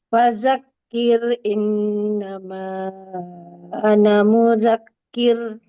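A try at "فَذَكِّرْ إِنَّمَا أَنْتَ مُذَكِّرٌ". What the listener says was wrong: Bukan ana, anta. Anta. Dan jangan pakai Z, pakai za. Jangan pakai Z. Iya, pakai za ya.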